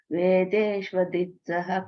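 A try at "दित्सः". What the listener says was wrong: Ditsah, you don't have to say Ditsaha, that ich sound comes. Ditsah.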